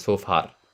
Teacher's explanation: in the Indian accent, I've also heard this being pronounced as sofa, with the R sound at the end of sofa